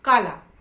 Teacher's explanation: तो जब हम बोलते हैं काला, तो पहले जो काला शब्द होता है उसमें का शब्द पर ला से ज्यादा बलाघात होता है, यानी उस शब्द के अक्षर के उच्चारण पर ज्यादा जोर दिया जाता है।